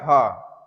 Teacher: ह अगर आप बोल रहे हैं तो यह काकल्य व्यंजन के अंतर्गत आएगा।